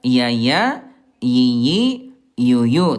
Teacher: huruf ya dari segi udara jahar tidak keluar udara. Ya yi yu tidak ada udara.